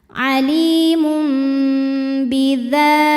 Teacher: Ada hukum iqlab karena ada tanwin dhammah menghadapi huruf ba, maka tanwin diganti jadi bunyi mim sukun disertai dengungan.